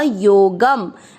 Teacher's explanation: योग, ग पे अनुस्वार आधा म, योगम